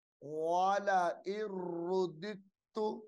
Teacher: ار را پہ شروع دال تازر دت تا پشتو رددت یہ دال ساکن کو چھوڑ دیا جائے گا دال متحرک کو تا مشدد کے ساتھ ملا کر پڑھا جائے گا